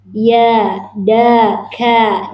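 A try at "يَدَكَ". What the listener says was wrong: Bagus. Semoga Allah memberkati Anda.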